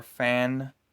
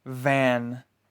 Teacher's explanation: Afterwards, you blow air out of your mouth. F is voiceless, so this sound will have no vibrations. V is voiced. This sound vibrates your throat when you pronounce it.